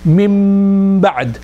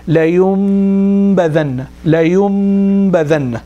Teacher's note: The whole sound will come purely from the nose because this whole thing is sealed now. The mouth is sealed. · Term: iqlab